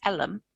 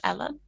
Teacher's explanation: So Ellum rather than Ellen, because you often get a kind of epenthetic vowel and a vowel insertion in that kind of consonant cluster